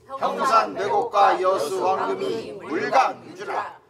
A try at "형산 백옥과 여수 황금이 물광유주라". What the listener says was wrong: 형산 백옥과 여수 황금이 이런 거를 흘려서 여수 황금이 이렇게 하면 안 돼. 형산 백옥과 여수 황금이 물광 유주라 이렇게 탁탁탁탁 발음 하나씩 해줘야 돼.